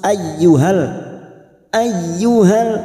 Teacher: masuk pada huruf ya hanya masuk tanpa Ditahan lama hanya masuk ayyuhal ayyuhal lalu masuk pada alif lam syamsiah atau